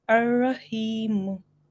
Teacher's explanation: here on the ha, there is no shadda, so you don't have to make a stress on ha